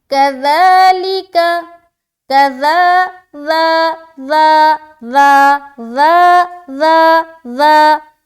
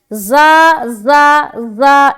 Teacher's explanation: زبان کی نوک کو ثنایا علیہ کی جڑ میں لگائیں گے. ٹھیک ہے، اور منہ کو اوپن کرتے ہوئے زبان کی نوک دانتوں کی جڑ میں ٹچ ہوگا. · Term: ذال